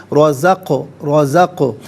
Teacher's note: قاف ساکن ہے لیکن حرف قلقلہ ہے تو آواز لوٹتی ہوئی محسوس ہونی چاہیے۔ رزق رزق، نون کھڑا زبر نا اور نون الف زبر نا دونوں طریقوں سے پڑھنا درست ہے۔